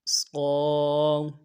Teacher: صاد کو ادا کرتے ہوئے الف مدہ کے ساتھ ایک الف دار میں کھینچیں گے الف مدہ کو۔